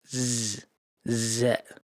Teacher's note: Z is not pronounced like S. It's a voiced Z like in English. You need to feel the vibration in your teeth.